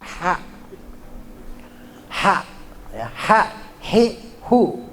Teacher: Ha-nya ha kecil di tenggorokan